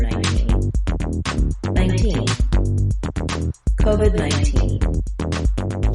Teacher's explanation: We use an aspirated T or a puff of air in the word 19. · Americans use an unreleased D in this word. Rather than saying COVID-19 with a break between the words, we release the D right into the N of 19.